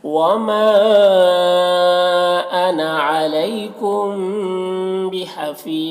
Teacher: بحفیظ یہاں پر وقف کی صورت میں مد عارض وقفی ہوگا، اس میں کو 3 مد عارض وقف، اس میں طول توسط قصر تینوں جائز ہوتا ہے، طول اولا ہوتا ہے، پھر توسط، پھر قصر کا مرتبہ ہوتا ہے۔